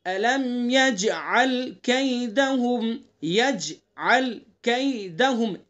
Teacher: الم یجعل، جیم کے اندر قلقلہ کریں گے